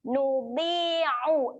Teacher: Huruf ain tekan di tengah kerongkong, huruf alif tak perlu.